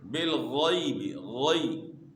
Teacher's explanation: جب ہم منہ میں پانی ڈالتے ہیں غرارے کی آواز جو پیدا ہوتی ہے، یہیں سے غین کی آواز نکلتی ہے، لیکن غین کو آپ نے موٹا کرنا ہے، بالغیب، غی۔